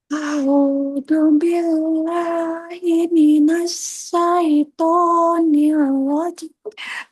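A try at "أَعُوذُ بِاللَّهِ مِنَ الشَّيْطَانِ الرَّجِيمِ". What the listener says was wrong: Nah, itu tapi jimnya nggak sampai ya, Bu ya? Nafasnya pendek.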